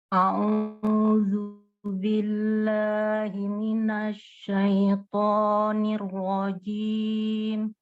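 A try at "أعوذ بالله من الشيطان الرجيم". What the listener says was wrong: Boleh dikurangi panjangnya sedikit. A'udzu billahi minasyaitonir rajim. Oke, sekali lagi a'udzunya A'udzu billah.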